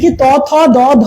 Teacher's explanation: প্রান্ত ভাগটা দাঁতকে স্পর্শ করে তার জন্য এটা দন্ত ধ্বনি বলব বা দন্তম মূলীয় বলা হয় এটা কি ত থ দ ধ